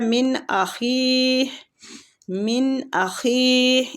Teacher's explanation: مطلب نون کو چھپا نہیں رہے، نون کا اظہار کر رہے ہیں